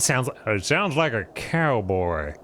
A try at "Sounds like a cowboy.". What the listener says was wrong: No, it's not that. Like a slow talking cowboy. A little bit faster. Deeper, less in your nose. Raspier voice, like you've smoked 2 packs of Marlboros a day.